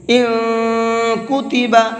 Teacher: تھوڑی دیر آواز کو ناک میں چھپا کر کے پڑھتے ہیں۔ ان کتب، اس طرح سے۔ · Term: اخفا